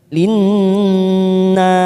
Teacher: ada warna pink pada huruf nun yang bertasdid namanya bacaan gunnah. Kita tekan 3 ketuk.